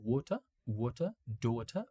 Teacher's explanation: the RP, the Cockney accents, none of them pronounce the R at the end. They just pronounce like water, daughter, all of them without the R.